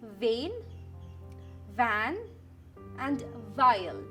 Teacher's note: See how my upper teeth are touching my lower lip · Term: V sound